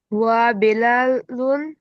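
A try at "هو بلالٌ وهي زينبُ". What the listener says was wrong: মাশাআল্লাহ।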